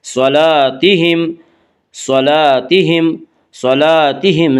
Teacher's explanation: الف مدہ کو ایک الف کے برابر کھینچ کر پڑھیں گے